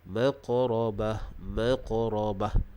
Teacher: Huruf qaf adalah huruf qalqalah. Maka kita baca dengan cara melantunkan bunyi huruf qaf tersebut. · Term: qalqalah sughra